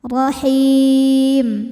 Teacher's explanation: ro yang kedua dibaca secara tafkhim karena berharakat fathah maka dibaca tebal rahim him mad id sukun karena ada Mad thi'i bertemu dengan